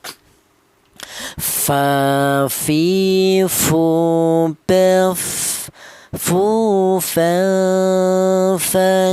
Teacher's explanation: huruf fa ini keluarnya huruf berasal dari bibir bawah bagian dalam menyentuh ujung gigi seri bagian atas